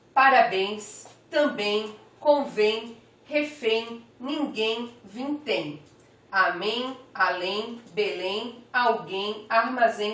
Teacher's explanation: todas ainda são oxítonas ou seja a última sílaba que é mais forte